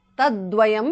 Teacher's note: Ekam tvekam tat tvekam tat because of sandhi. Tat the th in the end changes to d.